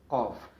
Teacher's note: जब तालू का नर्म हिस्सा ज़बान की जड़ के साथ टकराता है तो कौफ अदा होता है।